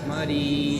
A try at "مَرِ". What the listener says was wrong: ماری نہیں ہو سکتا آدھی آواز ہے ان کے اوپر زبر ہے آدھی آواز ہے مری میم زبر را یا زیر کیا ہو جائے گا